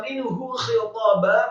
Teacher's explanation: setelah nun ada huruf ha, hukum bacaannya dari idgham, dibaca jelas, tidak boleh gunnah atau didengungkan.